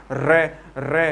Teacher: जिस प्रकार रे अपन रे वर्ण का जो उच्चारण करते हैं, रे रे अर्थात पहले स्पर्श करती है और स्पर्श करती हुए क्या करती है, यानी कि टकराती है, अर्थात बार बार टकराती है और फिर अपनी जो फिर क्या करती है, वो कंपन करती है। ये ध्वनि माने कि बार बार टकराती हुई क्या करती है, कंपन करती है। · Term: लुंठित